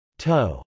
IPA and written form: tˈoʊ (tow)